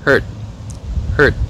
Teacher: Hurt âm cuối là phụ âm vô thanh, cho nên cái nguyên âm sẽ có xu hướng ngắn hơn một chút.